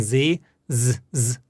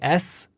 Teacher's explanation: s and z z z back to back you'll notice that when you say z z your vocal chords are vibrating but with s they're not